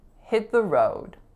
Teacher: So there's an unreleased T on the word hit. The, I'm saying with a schwa, so there's our reduction. And then road has that tense O vowel.